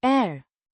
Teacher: A short and somewhat flat a. sound.